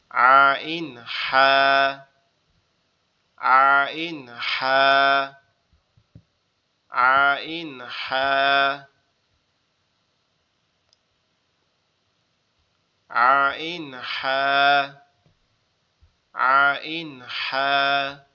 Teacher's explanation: দুই নাম্বার কণ্ঠনালীর মধ্যখান হইতে আইন হা